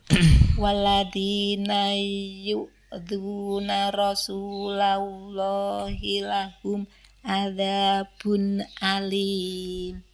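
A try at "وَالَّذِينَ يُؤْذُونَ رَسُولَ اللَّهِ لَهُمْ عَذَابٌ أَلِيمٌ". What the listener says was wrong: Luar biasanya, Masya Allah, di waladhi itu terbaca dal, waladhi.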